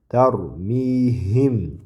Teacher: Tarmihim ikki harakat choziladi